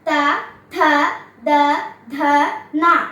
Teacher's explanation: തവർഗ്ഗം പല്ലുകൾ തമ്മിൽ സ്പർശിക്കുന്നത് കൊണ്ട് ദന്ത്യം